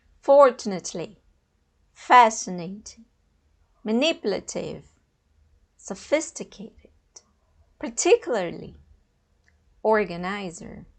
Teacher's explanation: Fortunately, fascinating, manipulative, sophisticated, particularly, organizer. Então, a gente tende a jogar o acento, né, a sílaba tônica lá para o final, mas é no início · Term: word stress